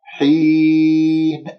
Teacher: مستقر ومتاع إلى، متاع إلى نون تنوين مع الهمزة إظهار، وسمعتموني كيف قرأت النون، يجب أن تقرأها هكذا، النون مظهرة، إلى وليس إلى، ولا تقول متاع، متاع إلى حين، كسرة الحاء والياء، حين، أخفض الفك السفلي حتى ما تخرج عندك غنة في هذه الياء، أقف بالنون الساكنة مظهرة بالمد العارضي للسكون، حركتين أو أربعة أو ستة.